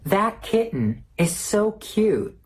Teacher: Careful, we have two phenomena here. The glottal stop in kitten, and the stop T in that and cute.